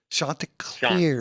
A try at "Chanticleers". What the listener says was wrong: Soft. It's a soft A. Not shant. Chanticleers.